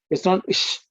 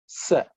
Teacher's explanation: This is a dental sa, sa. Just the S sound, no H sound